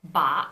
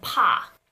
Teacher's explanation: When you say ba, you're going to feel that there is a vibration in your throat from the get-go.